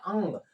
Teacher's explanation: इसमें हल्का ग का उच्चारण होता है